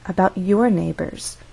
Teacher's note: so stress is on your